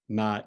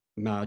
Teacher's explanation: Depending on the tone of your voice, ma in a high-pitched tone, ma can mean mother, and ma changed to a dipping tone, ma can mean horse.